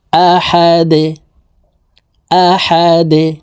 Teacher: আহা দাল দুই পেশ দুন দালকে ওয়াকফুর ক্ষেত্রে সাকিন করে ফেলবো দাল যেহেতু কলকলার হরফ নিচের দিকে ধাবিত করে ধাক্কা দিয়ে সাকিন করে ফেলবো